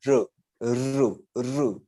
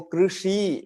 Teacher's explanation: जीभ मूर्धा पे लगनी चाहिए, जहां से आप श निकालते हैं।